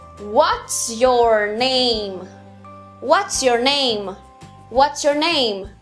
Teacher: Você começa forte, desce e sobe de novo.